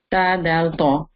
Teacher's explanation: The tip of the tongue touches the back of the upper 2 teeth, the gum line.